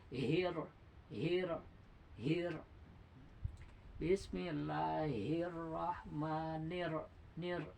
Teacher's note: posisi lidah setelah mengucapkan hir langsung ditarik dan ujung lidah itu ditarik ke belakang